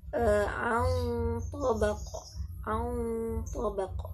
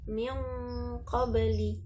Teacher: Berarti nunnya tipis. Sedangkan nun mati bertemu dengan to, dan to adalah huruf tebal isti'la, maka dia ikutan tebal.